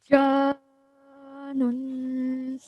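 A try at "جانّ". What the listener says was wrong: But remember that this is Maddul Kabir, so we have to really stretch it for at least 4 seconds, okay?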